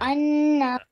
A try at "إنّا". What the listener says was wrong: Oh come on! It's kasra. In you have to apply gunna. Why are you not applying the rules?